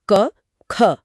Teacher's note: अगर उंगलियों को गले पर रखा जाए तो पहले दो अक्षरों में जैसे क ख। गले में कोई कंपन महसूस नहीं होगा। यह अघोष है।